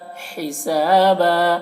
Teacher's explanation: ये हा की आवाज़ हलक से निकलती है हवा के साथ में। यहाँ पर वक्फ करेंगे तो हिसाबा इस तरह पढ़ेंगे।